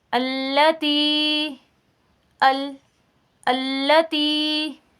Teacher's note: ہماری زبان کے جو سامنے والی نوک ہے اس کے سائٹ والے ساتھ ساتھ جو جڑے ہوئے کنارے ہیں وہ ضواحک سے لے کر ثنایا تک کے دانتوں کے ساتھ لگ رہے ہیں۔ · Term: لام کا مخرج